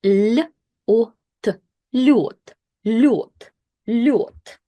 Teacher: when yo follows the consonants, it doesn't only make it soft, but it also loses this kind of like y sound · So what happens here is that we have the vowel yo, which is basically pronounced as I-O, yo, yo. And that vowel makes the preceding consonant soft. So instead of using this default sound l, l, l, we have to switch it to the soft l, l, l.